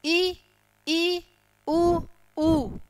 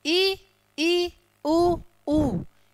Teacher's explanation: यानी कि मुख क्या खुलता है? थोड़ा सा, नाम मात्र के लिए ही खुल रहा है। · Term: संवृत